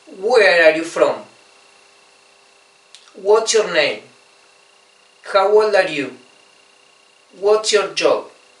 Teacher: yo no les di un rising tone como en castellano o como a las Yes No Questions, sino que les di un falling tone